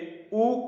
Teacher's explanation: भाषा विज्ञान की दृष्टि से ऊ जो है हमारा वह पश्च संवृत स्वर है। अघोष वर्ण है।